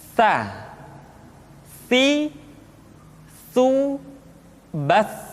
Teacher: Sa dikeluarkan dengan menyentuhkan ujung lidah kita dengan dinding dua gigi seri bagian atas. Diucapkan dengan suara dan nafas yang terdengar mengalir. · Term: huruf Sa